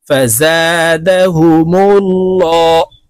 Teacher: আল্লাহ শব্দের আগের হরফে পেশ আছে, তাই এই লামকে ল অর্থাৎ মোটা করে পড়ব।